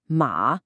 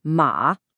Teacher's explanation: See how it starts up high right where the first tone is, and then just drops like a rock. It's quick and sharp. · The best words to describe the fourth tone are forceful and fast. It's a very definite sound.